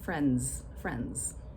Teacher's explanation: the D sound is surrounded by an N and by the S in spelling, but it's really more like a Z